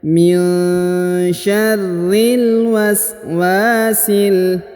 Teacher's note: waswasil langsung disambung ke huruf lam yang berharokat sukun